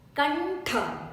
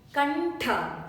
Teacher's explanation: So tha needs to be stressed.